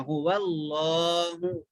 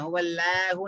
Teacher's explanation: لام کھڑا زبر لا کو کھینچنا, اللہ کے لام کو موٹا پڑھنا, هو اللہ. لفظ اللہ کے لام سے پہلے جب بھی زبر آیا یا پیش آیا تو اللہ کے لام کو موٹا پڑھنا, هو اللہ پڑھنا, هو اللہ نہیں پڑھنا, هو اللہ.